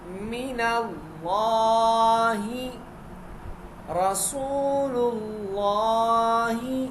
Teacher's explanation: یہاں لفظ اللہ کے لام سے پہلے لام پر پیش ہے تو اس کو موٹا پڑھیں گے